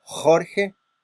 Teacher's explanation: Este sonido tiene la característica de ser un sonido bastante áspero, bastante agresivo a simple oído, puesto que necesitamos hacer esfuerzo con lo que es la úvula, el articulador pasivo, y por supuesto la raíz de la lengua o la parte posterior del dorsal de la lengua como articulador activo.